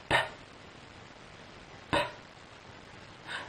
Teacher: ناخد بالنا ان صوت ال P تقفل شفايفك، بتجهز كمية هواء وتضخها بقوة غير صوت ال B. يعني مثلا هطلب منك تجيب حتة ورقة ب ب صوت ال ب بيطلع بهوا، وصوت ال ب بيطلع من غير هوا.